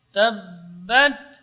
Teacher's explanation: Kemudian ba, makhrajnya di dua bibir. Tabbat, rapatnya kedua bibir. Ketika mengucapkan ba, ini lebih kuat daripada mim.